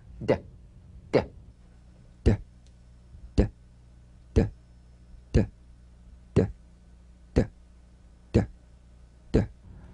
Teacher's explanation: Play this D drum beat on the springing away of the tongue from the upper gum ridge. Feel a pulsation in the tongue.